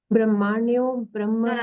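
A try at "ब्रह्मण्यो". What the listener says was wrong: No. It is not Brahma, no? Brahmanyo. That hakara should be there.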